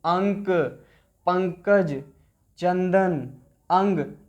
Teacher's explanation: अनुस्वार के उच्चारण में नाक से अधिक सांस निकलती है और मुख से कम सांस निकलती है।